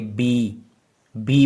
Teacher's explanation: तो आपको अपने कानों में एक हैवी वाली वाइब्रेशन फील होगी